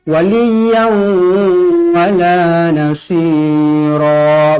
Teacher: Tanwin yang tidak selari bertemu huruf waw, hukumnya di sini idgham ma'al gunnah. Wajib dibaca dengung 2 harokat. Saya punya bibir nampak waliyan.